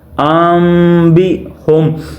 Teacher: یعنی کہ جو نون ہے اس کی آواز کو میم میں بدل دیا جا رہا ہے۔ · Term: اقلاب